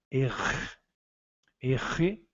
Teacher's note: O R em francês sempre bem aspirado, como carioca